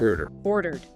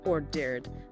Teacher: this D sound isn't a full extra syllable like in wanted. It's just a light ed sound attached right onto the end of the word order. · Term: light D